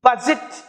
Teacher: देखो स्ट्रेस ब पे है